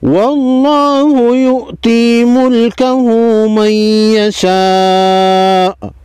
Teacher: نون ساکن کے بعد حروف یرملون میں سے یا ہے، ادغام مع غنہ ہوگا ، یعنی ادغام کے ساتھ غنہ ہوگا، ادغام ایک حرف کو